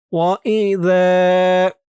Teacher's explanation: জালের উচ্চারণটা একদম নরম হবে, জিহ্বার মাথা উপরের দুই দাঁতের মাথার সাথে লাগবে এই জালের উচ্চারণটা করার সময়।